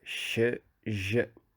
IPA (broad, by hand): ʃ ʒ